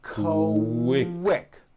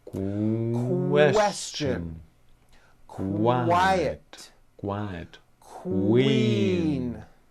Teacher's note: the word quick is pronounced with a k and a strong W sound · Q sounds are made with the k sound and the W sound put together